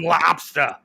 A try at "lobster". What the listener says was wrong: Lobster. No, you said the R. You can't say the R. You got to do the ah.